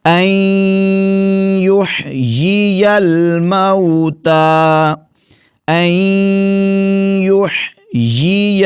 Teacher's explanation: اس نون کو ہم نے نہیں پڑھنا، نون کو یا میں ملا دینا ہے اور غنہ کرنا ہے